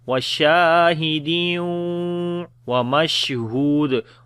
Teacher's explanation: Shin we long due to alif madda here. After the tanween the next is waw, we make idgham with ghunna.